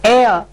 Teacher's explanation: the word starts with H, but the sound or the pronunciation that comes first is A, which is a vowel sound